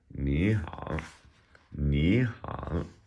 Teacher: When two third tones come together, the first one changes to a second tone. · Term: changing tones